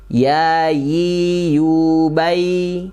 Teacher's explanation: Tengah lidah menempel ke tengah langit-langit atas.